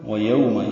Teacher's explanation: واو لین ہے، یہ بھی ہونٹوں کی نا تمام گلائی سے ادا کریں گے